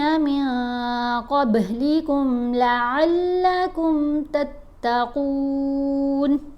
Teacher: قوف کو موٹا پڑھنا ہے، اور با کے اوپر ہم نے کلکلا کرنا ہے